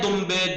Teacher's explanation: بے آ جائے تو اس نون میں نون کی نہیں میم کی آواز آئے گی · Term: اقلاب